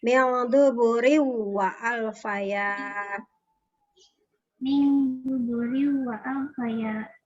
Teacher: Jadi kasrotainnya langsung masuk ke huruf waw ya. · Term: Idgham bigunah